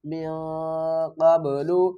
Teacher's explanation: نون کی آواز کو چھپا کر پڑھیں گے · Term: اخفا